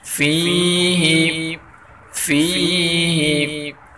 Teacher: فی کی یا کو بھی ایک الف کی برابر کھینچ کر پڑھیں گے۔